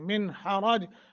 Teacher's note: من پہ اظہار کرنا ہے، اخفا نہیں کرنا چونکہ نون ساکن کے بعد حروف حلقی میں سے ہا ہے